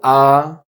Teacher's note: The German ah is located right in between the ah in bad and the ah in father.